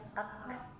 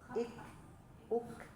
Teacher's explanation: Kalau dari segi nafas, kalau kaf mah dia hamas ya, keluar udara